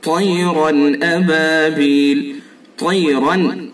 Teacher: را کے اوپر دو زبر ہیں، تنوین ہے، تنوین کے بعد یہ حروف حلقی میں سے حمزہ ہے، تو اس کے اندر اظہار ہوگا · یہ تا چونکہ حروف مستعلیہ میں سے ہے تو اس کو پر بھی پڑھا جائے گا۔ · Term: اظہار حلقی